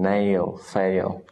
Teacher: it moves from the long A sound to the short I sound